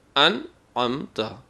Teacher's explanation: تنوین اور نون کی اپنی اصلی آواز نکلے گی، غنہ نہیں کیا جائے گا۔ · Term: اظہار نون